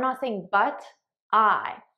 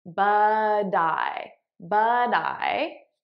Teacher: So here, I'm not saying but I, I'm saying but I, but I. So I'm transferring the T sound onto the next word. Now you'll notice I'm saying it as a soft D because that's American pronunciation.